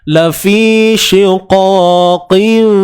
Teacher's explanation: Tutup bibir, tapi pegangan di antara dua bibir itu lemah. Bukannya kita tutup secara sempurna. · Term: iqlab